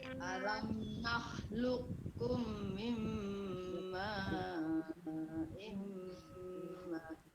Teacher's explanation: Jadi sini kumnya ditahan, mimnya ditahan, imnya ditahan lagi ya. Jangan terburu-buru ya, santai aja.